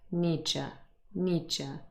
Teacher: But what happens in terms of assimilation is that d and y merge together and become j.